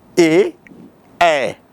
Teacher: ए और ऐ इन दोनों का उच्चारण जब हम करते हैं तो कंठ और तालु के सहयोग से। ए जब हम ए ऐसे कहते हैं तो हमारा जीभ आधा तालु की ओर जाता है और दबाव कंठ में भी होता है। · ए, जब हम ए ऐसे कहते हैं तो हमारा जीभ आधा तालु की ओर जाता है और दबाव कंठ में भी होता है। ए, ऐ, तो ये दोनों वर्ण कंठ और तालु के सहयोग से उच्चरित होते हैं। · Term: कंठतालु